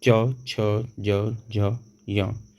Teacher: चा वर्ग तालव्य इसका उच्चारण स्थान है